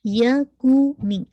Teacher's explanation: کاف کی دمہ کو الحمدللہ پورا آپ کا جو لپ کا سرکل ہے وہ بالکل راؤنڈ ہونا چاہیے